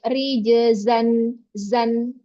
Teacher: dia desisnya tajam namun juga dia mengalir